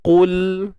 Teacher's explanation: Untuk qaf tebal, matikan lam. Qul, jangan lantun ataupun tawallud, kita beranakkan. Qul. Pegang makhraj lam.